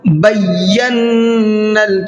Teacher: بینا، اس لفظ کو دھیان سے سنیے گا، بینا، اس میں غلطی یہ کرتے ہیں لوگ، بیانل پڑھتے ہیں، بیانل، تو یہ غلط لفظ ہے نا، اس کو کس طریقے سے پڑھنا ہے آپ کو؟ بیانل، چونکہ یا کے اوپر بھی تشدید ہے اور نون کے اوپر بھی تشدید ہے، اس لیے دونوں کو ڈبل آواز کے ساتھ میں پڑھنا ہے، بیانل، اور نون میں غنہ کریں گے۔